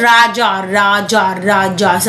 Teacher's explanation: हिंदी वर्णमाला में केवल 'रा' ही एक त्रयित या कंपनयुक्त व्यंजन है। जब इसका उच्चारण कंपन के साथ किया जाता है, तो जीभ एक गोलाकार आकृति ले लेती है।